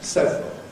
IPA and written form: ˈsevrəl (several)